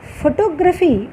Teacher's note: ఫోటోగ్రఫీ దగ్గర టోకు ముందు స్ట్రెస్ వచ్చింది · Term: స్ట్రెస్ షిఫ్ట్